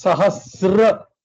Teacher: There is no Sahastra, it is Sahasra. So it is no ta.